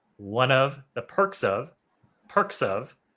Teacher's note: one of that's that consonant vowel one one of and then perk ends with the k sound and the next word is uh of starts with the vowel